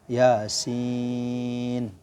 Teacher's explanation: Yasin, ya 2 harokat, sin 6 harokat.